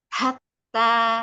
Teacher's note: ha yang kecil dari tengah tenggorokan. Tenggorokan. Jadi agak di effort sedikit didorong tapi nggak terlalu banyak. Hatta dirasakan itu yang tengah tenggorokannya bergetar sedikit. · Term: ha kecil